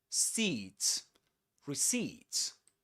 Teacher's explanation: The accented syllable is the last one.